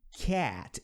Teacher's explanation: É entre o nosso A e o nosso E. Cat. Boca aberta, mas meio que fazendo um som de E.